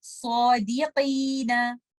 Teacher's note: Letter सौद के बाद आने वाला अलिफ मद हम हैवी पढ़ेंगे सौदीकीना। कॉफ इस्तेला का लेटर है, ऑल्दो कि जब कॉफ के नीचे कसरा आ जाती है इसकी हैवीनेस कम हो जाती है, लेकिन फिर भी ये कैफ नहीं बन जाएगा।